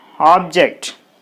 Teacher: object is a noun so while noun is there the stress should be on the first syllable so there should be the stress mark on ob ob so